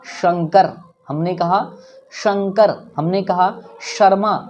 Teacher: जब आपका टंग तालु में टच करता है, जब आपका जीभ तालु में टच करता है, तब तालब्य श का निर्माण होता है।